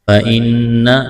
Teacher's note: وَتَتَّقُوا قاف کو موٹا کرنا ہے، واو مدہ ہے۔ فَإِنَّ نون مشدد ہے، آواز ناک میں چھپائیں گے، غنہ کریں گے۔